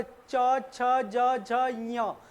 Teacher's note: च वर्ग क्या होता है, तालव्य, देखो तालव्य मुंह का ऊपर हिस्सा होता है, देखो अब च छ ज झ ञ, जीभ सीधा ऊपर जा रही है।